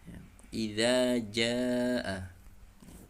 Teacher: Dari ujung lidah bertemu dengan ujung gigi depan bagian atas. Za, atau istilah mudahnya ujung lidah dikeluarkan sedikit saja. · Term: Huruf zal